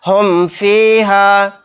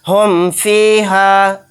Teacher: यहाँ पर ना तो गुन्ना होगा ना तो इख्फ़ाए शफवी का कायदा होगा, यहाँ पर इजहार शफवी होगा, यानी मीम को ज़ाहिर करके पढ़ना है।